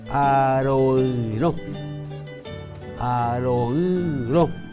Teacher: se ha de pronunciar con nariz e inguture juntamente, o sea, pronunciación nasal y gutural simultáneamente, como en estos ejemplos, o en este único ejemplo: aroiro, aroiro, nasal o nasal también, que significa yo desprecio.